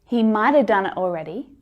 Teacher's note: the word after might have starts with a consonant sound, right? So it becomes mighta. The ending is just a schwa.